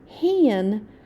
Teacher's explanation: The A doesn't say ah like you would expect it. It says an when it's with that N. · Now remember, whenever you have an N or an M at the end of a word, right after vowel A specifically, the A sound will be just a little bit different because of that nasal sound that N and M make